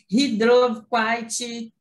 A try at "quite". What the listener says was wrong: Não é quite, não. Quite. Não tem ti, não. É quite. Termina no T, não tem o I, não.